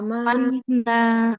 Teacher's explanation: nunnya panjang juga ya karena ada harakat fathah bertemu dengan alif